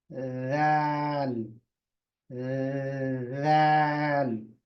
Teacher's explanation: जबान की जो नोक है वो ऊपर के दो दांतों को लगेगी